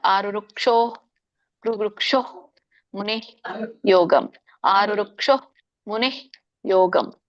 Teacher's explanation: ಅಲ್ಲಿ ನಿಮಗೆ ವಿಸರ್ಗ ಬಂದಾಗ ಅದು ವಿಸರ್ಗ ಪೂರ್ಣ ಉಚ್ಚಾರಣೆ ಮಾಡಬೇಡಿ ಅರ್ಧ ಉಚ್ಚರಣೆ ಮಾರ ಆರು ವೃಕ್ಷೋ ವೃಕ್ಷೋಹ ಮುನೆ ಯೋಗಂ ಆರು ವೃಕ್ಷೋ ಮುನೆ ಯೋಗಂ ಹಿಂಗೆ